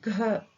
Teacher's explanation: ஸோ இக் அது கூட ஹ சவுண்டு சேர்த்துக்கிறோம். ஸோ அந்த க சவுண்டுடைய மெய்யெழுத்து இக்கு, இக்கு கூட ஹ சவுண்டு சேர்த்துக்கிறோம்